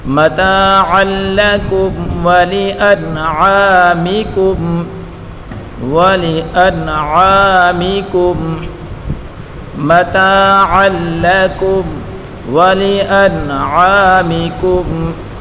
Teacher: نون ساکن ہے، نون ساکن کے بعد اظہار کا حرف عین آ رہا ہے تو یہاں اس نون کو ظاہر کر کے پڑھیں گے، اور عین الف صبر ع الف مدہ ہے، اس کو ایک الف کی مقدار کھینچ کر پڑھیں گے۔